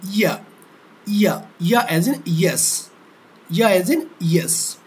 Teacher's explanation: এই শক্ত অংশ থেকে আমাদের জিহ্বার যে মধ্যভাগ, সেটা জিহ্বার মধ্যভাগ আর শক্ত অংশ থেকে চাপ লেগে উচ্চারিত হচ্ছে ইয়া ধ্বনি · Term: প্যালেটাল ধ্বনি